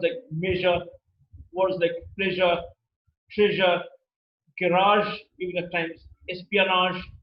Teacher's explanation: the tip of the tongue touches the back of the alveolar almost near the hard palate region we get this sound easier and it is also a fricative · it's a voice sound meaning the vocal cords are held loosely together and there is a is a lot of vibration in the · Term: post alveolar